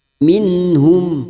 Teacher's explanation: ha Idhar halq nun sukun dibaca jelas tanpa mendengung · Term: idhar halki